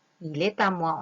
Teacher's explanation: On va mettre une petite liaison entre le T et le A.